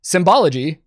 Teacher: pronounce that S as a Z there